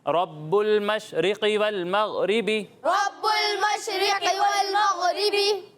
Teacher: قاف بھی حروف مستعلیہ میں سے ہے اور غین بھی حروف مستعلیہ میں سے, ٹھیک ہے. ان دونوں کو پر پڑھنا ہے